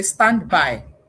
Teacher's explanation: When you say stand by, you have unintentionally, unconsciously deleted the da. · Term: elision